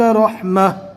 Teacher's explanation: رکنے کی حالت میں جزم والی ہا بن جائے گی